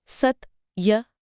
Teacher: इस आधे त की वजह से स के उच्चारण पर एक खिंचाव या दबाव पड़ता है, जिससे स को बोलने का समय 2 गुना हो जाता है।